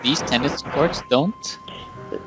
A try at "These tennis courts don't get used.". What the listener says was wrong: Is your cold making it hard to pronounce the letter G?